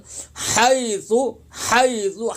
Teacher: हा की अदायगी हलक से होगी